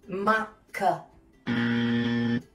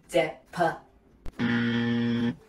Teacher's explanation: in Thai, the K, P, and T stop final sounds are not fully aspirated. Unlike in English.